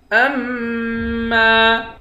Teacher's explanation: حمزے کو میم کے ساتھ ملا کر میم پر غنہ کریں گے. میم کے بعد الف ہے، الف حروف مدہ ہے، ایک الف کی مقدار کھینچ کر پڑھیں گے.